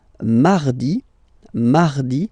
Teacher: So you can hear that you don't pronounce it that strongly, this R.